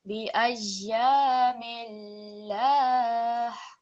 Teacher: because the lam mushaddid is preceded by a kasra, it will be a thin lam